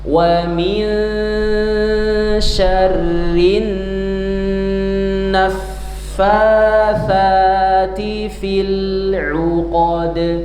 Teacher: Jadi yang ditahan adalah wamin ditahan tiga harakat syarrin tiga harakat ya jangan terburu-buru. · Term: ikhfa nun musyaddadah